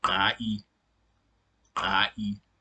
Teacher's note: generally it's just a constriction of the glottis. So it's pronounced in a very rough and deep way. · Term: strident vowel